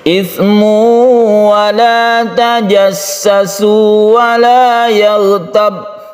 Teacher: Ismu, ini kita panjangkan karena dia itu idgham bi gunnah, tanwin bertemu dengan wawu. Idgham artinya masuk, tanwinnya masuk ke wawu sehingga membentuk tasydid wawu.